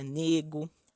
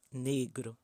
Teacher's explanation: falantes de idiomas vindos da África de pronunciar certos grupos consonantais o resultado nesse caso foi a supressão do Erre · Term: dissimilação